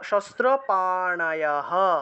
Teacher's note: অশস্ত্রম শস্ত্র পাণায়াহ, বিসর্গ থাকলে হ উচ্চারণ। এই বিসর্গটা লাইনের একদম শেষে আছে বিধায় পূর্ণরূপে হ উচ্চারণ হয়েছে। শস্ত্র পাণায়াহ, হটা পূর্ণ উচ্চারণ।